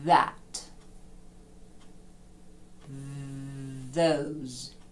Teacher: язика між зубами і видаю звук наче бджола годить Ось тут в мене вібрують мої голосові зв'язки і при цьому я видихаю повітря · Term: звучний